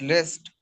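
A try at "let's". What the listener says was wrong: नहीं है लेस्ट L E S नहीं है लेस नहीं लेट लेट लेट्स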